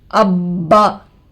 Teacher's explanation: अब्बा, इब्बा। देखिए इसको अबा बोल के नहीं पढ़ते, बा के ऊपर तशदीद है तो बा के ऊपर सख्ती करना।